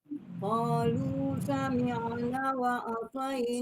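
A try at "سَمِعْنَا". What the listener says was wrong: Sami'a. Nah, Bu, naknya panjang. Sami'a.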